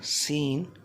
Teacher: scene and swad comes out from the tip of the tongue and the inner edge of the both front upper teeth